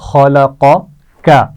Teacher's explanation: پہلا قاف موٹا پڑھا جائے گا اور دوسرا کاف باریک پڑھا جائے گا